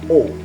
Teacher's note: huruf O seperti pada kata orang, bibir membulat sedikit O.